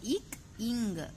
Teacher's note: சோ இக் இங் இந்த 2 லெட்டர்ஸும் ஆகிய இரு மெய்களும் நாவின் முதற் பகுதி அன்னத்தின் அடிப்பகுதியை பொருத்துவதால் பிறக்கின்றன